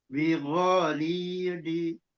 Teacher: Zi-nya jangan terbawa panjang. Li-nya saja yang ada mat.